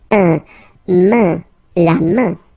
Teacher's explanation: so it's really a nasal, it goes in your nose